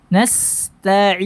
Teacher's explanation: Sin ini punya sifat sofir, suaranya tajam terdengar, ya, karena suara yang keluar melalui makhraj yang sempit